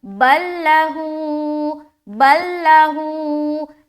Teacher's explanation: تو جب دو حرف آ گیا ایک ہی جیسا اور ایک کے اوپر سکون ہے دوسرے کے اوپر شد ہے، تو سکون والا جو حرف ہے وہ یہ ہو جاتا ہے، اسے نہیں پڑھنا ہے، اور جو شد والا حرف ہے اسے ملا کر پڑھیں گے، یعنی کہ با کو لام سے ملائیں گے اور اس لام کو نہیں پڑھنا، اسے حذف کرنا ہے